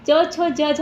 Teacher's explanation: च, छ, ज, झ ये जो 5 वर्ण हैं तालु से बन जाते हैं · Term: तालव्य वर्ण